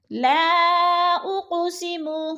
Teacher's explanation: لا اقسم، لا پہ تو مد منفصل ہو رہی ہے، 4 الفی مد ہے، 4 حرکات کے برابر ہم نے اس کو کھینچ کر پڑھنا ہے، کیونکہ حروف مدہ کے بعد حمزہ دوسرے کلمے میں ہے تو مد منفصل ہے۔